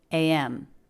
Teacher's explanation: anytime we're saying a series of letters out loud, like JFK, PM, HBO, stress is always on the last one. So M has more stress than P.